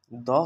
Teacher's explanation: দ হচ্ছে কিন্তু অল্পপ্রাণ ঠিক আছে এবং এটি হচ্ছে একটি ঘোষ বর্ণ